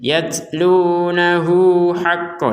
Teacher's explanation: hu-nya menjadi 2 harokat karena digabungkan dengan huruf ha ini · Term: dua harokat